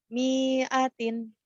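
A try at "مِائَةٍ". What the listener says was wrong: Nah, ini nggak pasangan. Miatin nggak ada yang panjang. Miatin. Pendek. Ya ini pendek semua. kalau kap yang panjang ini kan yang ini nih ya. Kap yang panjang nih ini ada alifnya tuh.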